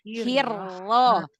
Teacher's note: Jadi takrirnya cuma satu